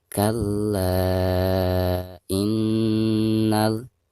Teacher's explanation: dihukumi mad jaiz munfasil dan dibacanya bisa 2, bisa 4 dan bisa 5 harokat